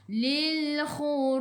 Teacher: Apabila berhenti bacaan, apabila waqaf bacaan, ada huruf qalqalah dan tak ada baris sabdu, kita panggil qalqalah kubra. Lantunannya besar. Lantunannya kuat.